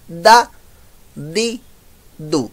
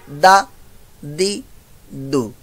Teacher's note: जबान की नोक ऊपर के दांतों की जड़ से, जहां से ता होता है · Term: दाल की साउंड